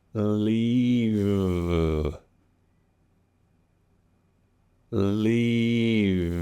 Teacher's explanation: Now, you may hear me release the V a bit, okay?